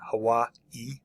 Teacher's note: You should put an emphasis there at the end, Hawaii.